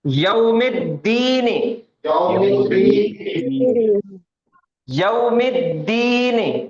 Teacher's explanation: دال حروف شمسیہ ہے کہ قمریہ ہے؟ شمسیہ. اس وجہ سے الف اور لام دونوں بھی ڈراپ ہو جائیں گے